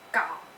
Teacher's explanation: third tone starts in the middle and goes down. It's very important to distinguish it from second tone, and its tone marker is a line going from top to bottom, just like how it sounds.